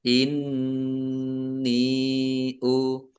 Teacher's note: Nun tasdid bacaan gunnah atau mendengung, dibaca mendengung. Ditahan biar tampak mendengungnya